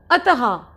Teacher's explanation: तो विसर्ग में ह की ट्यूनिंग आती है